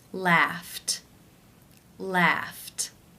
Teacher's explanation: its unvoiced it is case one where the ED is pronounced as the T sound